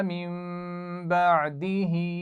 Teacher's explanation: نون ساکن کے بعد با آ رہا ہے تو اس کو میم سے بدلیں گے اور غنہ بھی کریں گے